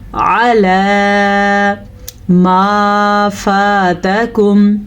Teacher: आम तौर पे लोग अला पढ़ते हैं, हमने इसको पढ़ना है अला, अला मा फातकुम। मीम के बाद अलिफ है तो ये अलिफ मद्दा है, इसे हम खींच के पढ़ेंगे।